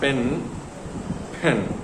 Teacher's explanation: Okay, so அது அப்படிதான் தமிழ்ல சொல்ற மாதிரி கரெக்டா பென் அப்படின்னு இப்ப வராது. அது பென் லைட்டா கொஞ்சம் அந்த மூக்குல இருந்து ஏர் ரிலீஸ் ஆகும்